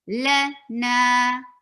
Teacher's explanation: La is 1 count long and na 2 haraka. So there should be a clear difference.